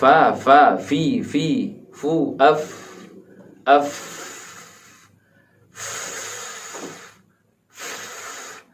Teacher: ternyata di sini fa memiliki sedikit angin, ada napas yang keluar